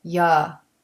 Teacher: And for reduction, the word you is not pronounced with a clear oo sound. We pronounce it ya.